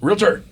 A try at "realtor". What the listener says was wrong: It's not realtor. There's no A. Realtor.